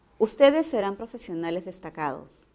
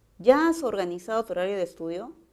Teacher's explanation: el tono es descendente porque es una afirmación